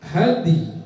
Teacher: Dalnya dibaca setengah harkat, ya-nya setengah harkat. Dan dal setengah harkat itu mentad'ifkan, melemahkan sifat qalqalah. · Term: waqaf rom